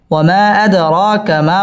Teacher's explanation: র পুর হবে এবং র 1 আলিফ টেনে পড়তে হবে মধ্যে তাবাই।